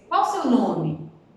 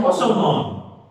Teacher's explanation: no português, quando você faz uma pergunta, a entonação ela sobe para poder indicar que é uma pergunta. Isso não acontece no inglês.